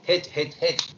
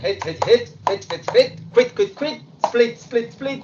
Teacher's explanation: Recuerden, se los decía en otro video, que la pronunciación no va a ser hit como en el español, sino esa I es más tirando a una E.